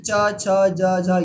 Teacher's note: ठीक है, तो तालु है ये, यानी कि जो आपके दांतों से पीछे और नीचे का हिस्सा है ये कहलाता है तालु। तो इन सभी वर्णों को बोलते समय हमें जो जीभ टच होती है उस पर ध्यान देना है कि वो तालु पर टच होती है।